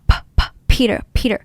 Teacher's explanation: The difference between P sound and PLA sound is P is aspirated. There's air coming out.